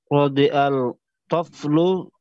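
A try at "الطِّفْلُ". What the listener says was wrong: Tif itu bukan TOEFL saya, TIF lo itu.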